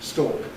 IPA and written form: stɔːk (stalk)